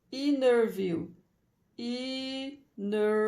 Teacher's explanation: Vem depois do N, o T fica silencioso, né? Então, after N, silent T, né?